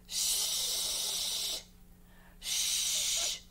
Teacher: it is definitely unvoiced we feel that we feel that breath we feel that breath okay we can find the sh at